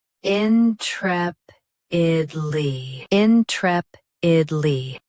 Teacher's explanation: Both US and UK have the same pronunciation of this word. Stress trep. Keep id light and lee clear. · Stress trep. Keep id light and ly clear.